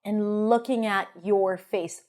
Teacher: So I would probably stress your face and looking, right? And reduce, schwa.